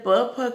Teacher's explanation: जब हमने प फ का उच्चारण किया तो हमारे दोनों होंठ जो है आपस में मिले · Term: ओष्ठ व्यंजन